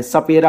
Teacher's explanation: स का उच्चारण स्थान दंत होता है